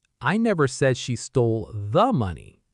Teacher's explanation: Stress on the. Maybe she stole some money, but not this specific money we are talking about.